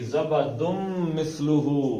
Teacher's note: حلیۃ او متاع، اس کو ناک سے ادا کرنا ہے. زبدن، دن تھا اور آگے میم آ گیا یرملون کا قاعدہ تو دن کی جگہ میم چلی جائے گی